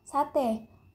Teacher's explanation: vokal e Tengah atas depan tak bundar